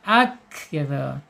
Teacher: ini harus dialirkan udaranya atau napasnya ya karena sifatnya hames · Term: alhams